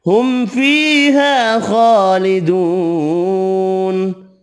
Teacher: نون ساکن پڑھیں گے وف کی صورت میں